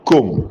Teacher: ഖാഫിനെ നമ്മൾക്ക് പൂർണ്ണമായിട്ട് കാഫിലേക്ക് അങ്ങ് ലയിപ്പിക്കാം. നഖ്ലുഖ് നഹ്ലുക്കും. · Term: ഇദ്ഗാം